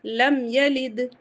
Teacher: میم ساکن کے بعد یہ آ رہا ہے، اظہار شفوی ہوگا